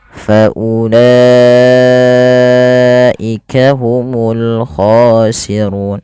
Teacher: u-nya nggak boleh panjang, di sini la-nya panjangkan 4 harakat atau 5 harakat yang kita kenal dengan istilah mad wajib muttasil.